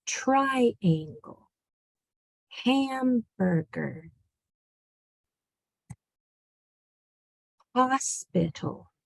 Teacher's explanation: Can you hear how the first syllable, the first part is said with more emphasis? That's called the accent.